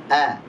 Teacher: Huruf hamzah huruf yang tipis dan memiliki sifat jahar dan syiddah, jelas.